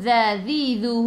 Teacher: Za zidu hujung lidah keluar pada gigi depan. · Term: Zal